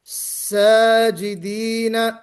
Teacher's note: सजिदीन, अलिफ से पहले सीन हरफे इस्तेफाल, तो हमारी आवाज मोटी नहीं होनी चाहिए। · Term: बारीक